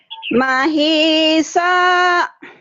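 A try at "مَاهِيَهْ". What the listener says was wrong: Salah. Bukan sa tapi so. Mahiso gitu.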